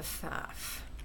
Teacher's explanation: deleting that unstressed syllable using unstressed syllable deletion